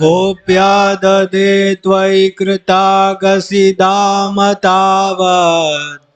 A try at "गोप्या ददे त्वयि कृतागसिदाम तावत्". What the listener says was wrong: तावत् has to be extended. आपको ऐसा लग रहा है बीच में हवा खत्म हो जा रही है।